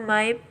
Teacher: map atau map yang tidak diletupkan